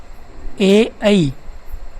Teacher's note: इनका उच्चारण स्थान है कंठ व तालु ध्वनि का नाम हो जाएगा कंठ तालव्य